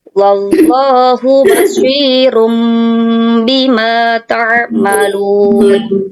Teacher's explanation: Hukum bacaan iqlab itu apabila ada nun sukun atau tanwin bertemu dengan satu huruf saja, yaitu huruf ba. Cara membacanya dengan mengubah suara nun sukun atau tanwin tadi atau suara huruf n-nya menjadi suara huruf mim.